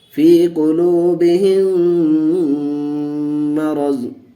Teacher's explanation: میم ساکن کے بعد میم آیا، اس لیے ہم نے میم کو میم سے ملا کر کے غنہ کر کے پڑھا، یعنی ادغام شفوی کا قاعدہ ہوا.